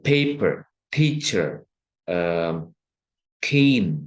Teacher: Jadi ketika kita berkata paper itu kayak yang P dan H gitu. Paper, jadi ada haknya. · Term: aspiration